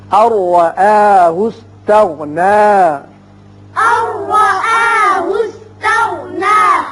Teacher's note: نون ساکن کے بعد را ہے، ادغام بغیر غنہ ہوگا